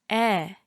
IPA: ɛ